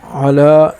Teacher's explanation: علا لام کے اوپر کڑا ہے تو اس وجہ سے اسے ایک الف کی مقدار اوپر کھینچیں گے